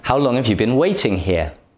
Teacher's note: The words how, long, and waiting are stressed.